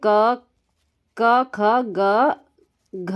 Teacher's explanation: Last वाले पांचवें वर्ण को छोड़ के बाकी 4 तक जो है क वर्ग का उच्चारण स्थान हमारा होता है। क वर्ग का उच्चारण स्थान होता है कंठ से, याद रखना है।